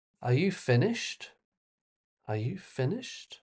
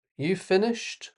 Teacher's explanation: How about a rising intonation? Could be a question.